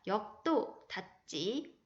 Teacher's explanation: 예사소리가 된소리로 바뀌는 현상입니다. 유형은 받침, 기역, 디귿, 비읍 뒤에 된소리가 되고요. 앞에 것 때문에 뒤에 게 영향받죠. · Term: 된소리되기